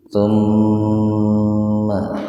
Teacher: Mim bertasdid itu gunnah, artinya mendengung ya. Tahan dua ketukan.